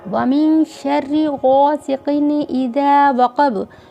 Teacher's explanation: وَمِن میں نون کو ناک میں چھپانا ہے اور شین حروف اقفا ہے اس لیے نون کو ناک میں چھپایا گیا ہے۔